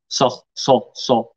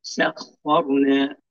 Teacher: هنا فخم الخاء، لا حرج أن الخاء أصلا مفخمة، لكن رقق السين